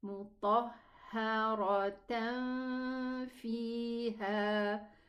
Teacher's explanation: I'm going to hide the noon into the fa. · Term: ikhfa